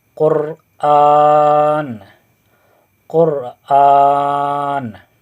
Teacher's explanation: रा के ऊपर अगर जज़म है और उससे पिछले वाला हर्फ पेश हो तो रा को मोटा पढ़ेंगे।